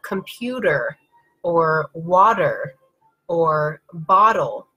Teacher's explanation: is not stressed means that we are soften the sound and the T becomes a D